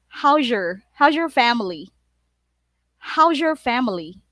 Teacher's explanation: Z plus Y is ZH